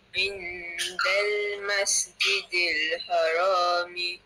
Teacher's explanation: Okey, panjang sikit lah pada ain tu, 2 harakat.